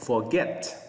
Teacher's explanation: Lên giọng ở âm get nha